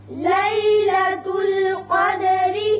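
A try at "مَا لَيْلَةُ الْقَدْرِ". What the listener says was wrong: یہاں وقف نہیں کرنا، آگے ملائیں گے.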